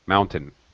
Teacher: And it's very fast. First syllable stress, second syllable is unstressed syllable.